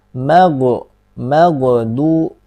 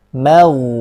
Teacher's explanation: Ghoin itu dialirkan ketika sukun. Mau. Mimnya juga harus tipis.